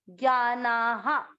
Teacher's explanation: विसर्ग को पढ़ेंगे हा